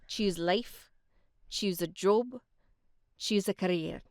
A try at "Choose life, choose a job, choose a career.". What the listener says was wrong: If I was going to get you to do that again, make those vowels longer. Choose life. Choose a job. Choose a career.